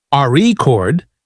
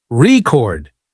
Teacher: For example, in the word record, if you stress the first syllable, RE chord, it's a noun, but if you stress the second syllable, record, it's a verb